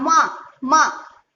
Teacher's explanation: माँ बोलते समय नासिका का तो यूज होता ही है, लेकिन इसके साथ साथ ओठ का भी यूज होता है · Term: ओष्ठ वर्ण